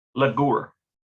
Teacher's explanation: to dwell it's almost like that r sound it's it like blends in with the ooh sound like ghoul you barely even hear the r sound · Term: very slight r sound